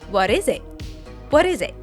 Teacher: The T in it is what's called a glottal T. Instead of releasing a full T sound, we cut it off at the back of the throat.